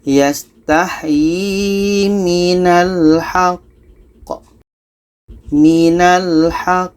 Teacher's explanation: Kita berhenti 2 detik baru pantulkan qa-nya.